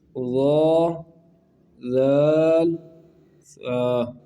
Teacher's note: ان کا جو مخرج ہے زبان کا سرا اور اوپر کے دانتوں کے اندرونی کنارے سے ادا ہوتے ہیں۔ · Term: حروف لسانیہ